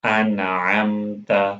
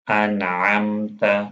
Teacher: اظہار کا مطلب ہے ظاہر کرنا، تو وہاں پر نون سکون ظاہر کیا جاتا ہے۔ نون سکون کی آواز ناک کے اندر لمبی کر کے نہیں لی جاتی۔ اس کو پڑھیں گے انعمت، نون سکون کی آواز کو ظاہر کرنا ہے، انعمت۔